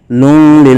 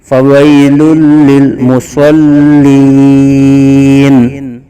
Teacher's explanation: یہ آگے فویل للمصلین، فویل یا ساکن سے پہلے زبر یا لین کا قاعدہ ہے، اور دو پیش کے تنوین کے بعد حروف یرملون میں سے لام آ رہا ہے، تو یہاں ادغام بلا غنہ، بغیر غنہ کے ادغام ہوگا، فویل لل، لون لل نہیں کریں گے، فویل للمصلین۔